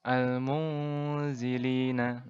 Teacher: cara membacanya adalah dengan cara samar-samar dan dengungnya dipanjangkan 2 harokat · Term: ikhfa hakiki